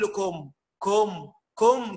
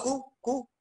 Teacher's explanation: الكاف فخمت وده خطأ، لأن الكاف حرف ترقيق